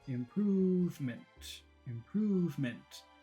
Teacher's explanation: That's short. So the word improvement is short, long, short.